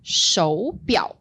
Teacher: And 手表 follows the tone variation that Joe previously mentioned, which 手 is normally a third tone. 手表, we have second tone, third tone.